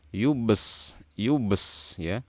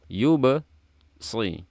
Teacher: Ini shadnya bukan bertasydid, jadi jangan yubes ya, tapi yubasi.